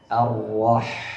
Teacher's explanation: ثم حرف الحاء من وسط الحلق